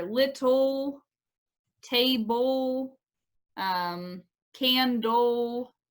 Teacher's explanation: it's almost like we're just producing an l sound it's really hard to distinguish a vowel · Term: schwa